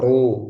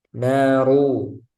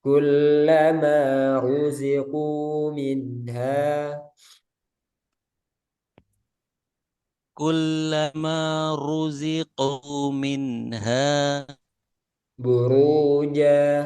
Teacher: ro dibaca tebal yaitu ketika ro berharokat dhammah, ru. Jadi ro berharokat dhammah itu tebal, jangan ru gitu ya.